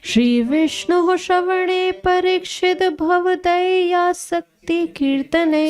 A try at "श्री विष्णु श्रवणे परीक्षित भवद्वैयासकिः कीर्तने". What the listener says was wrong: शक्ति नहीं है, वैयासकी है वो। श्री विष्णु श्रवणे परीक्षित भवद वैयासकी कीर्तने